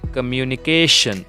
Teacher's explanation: In this word, there are 5 syllables and the stress will be on 4th syllable.